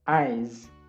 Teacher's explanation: Kalau itu akhirannya voice sound, nanti S ini dibacanya Z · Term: suara Z